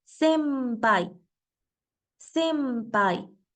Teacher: La n se pronuncia como letra m antes de sonidos como la p o la B